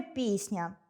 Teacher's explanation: Твердий приголосний [c] перед м’яким [н'] уподібнюється до [с'] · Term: уподібнення за м’якістю